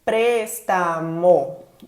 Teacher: préstamo, 3 sílabas, a antepenúltima é a tônica, pres, então essa é uma palavra esdrúxula.